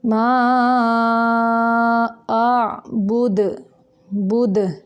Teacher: दाल को साकिन करते हुए कलकला करेंगे यानी हरकत देंगे।